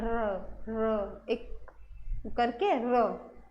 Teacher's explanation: र जब आप र बोलते हो ना तो ऊपर जो जीभ है वो एकदम से नीचे आ जाती है, र एक करके र कंपन सी लगती है। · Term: प्रकंपित व्यंजन